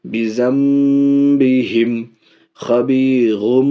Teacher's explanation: نون ساکن یا تنوین کے بعد اگر با آئے تو اس نون کو میم سے بدل کر پڑھتے ہیں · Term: اقلاب